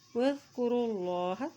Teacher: اللہ کا نام موٹا ادا کیا جائے گا، اللہ کے نام سے پہلے زبر آ گئی ہے